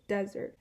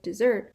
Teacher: In the English word desert, the place where a cactus grows, the first syllable is stressed, so desert. And then English word dessert, the second syllable is stressed.